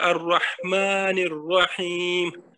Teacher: یہ جو را چونکہ حرف شمسی ہے نا تو اس لیے یہ الف لام اس کا گر جائے گا · اور اس کے بعد یہ نون پر زیر ہے اور اس کو چونکہ ہم وصل کے ساتھ پڑھیں گے تو اس کے ساتھ را کے ساتھ ملائیں گے